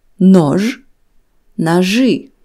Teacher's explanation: After letters ж and ш, the letter и is pronounced as ы